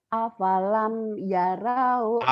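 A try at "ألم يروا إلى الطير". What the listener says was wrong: Awalam Bu, kok apalam jauh Pak. Awalam Bu. kurang nyamber tuh Bu. Kurang nyamber Bu. Rinya pendek. Cepat-cepat juga nggak boleh. Di ilatnya jangan cepat-cepat. Di toirinya aja. pendek.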